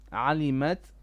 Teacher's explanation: bit of hams on the ta